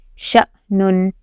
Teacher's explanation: یعنی یہ حمزہ ساکن ہے تو اس کو جھٹکے سے پڑھنا ہے. اگر یہاں جزم نہ ہوتا الف پر تو پھر وہ کیا ہوتا، شین الف زبر شا، الف مدہ ہوتا، لیکن الف کے اوپر جزم آ گیا یعنی اس کو جھٹکا دے کر پڑھنا ہے.